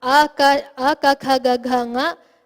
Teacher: All of these will be produced with the back of the tongue, the start of the root of the tongue hitting the throat, the back of the throat. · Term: kanthya varnas